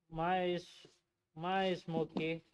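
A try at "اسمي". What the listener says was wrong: Ya, jangan pakai iye ya. Mais itu enggak ada iye.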